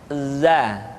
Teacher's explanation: Diucapkan dengan cara ujung lidah kita berada di antara dua gigi seri bagian atas dan bagian bawah. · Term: huruf za